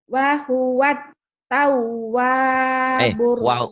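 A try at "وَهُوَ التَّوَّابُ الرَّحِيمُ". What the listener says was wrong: Wah dari mana itu? Tak ada wa. Enggak ada wa. Enggak ada wa. Huwat tawwabur rahim. Huwat tawwabur rahim.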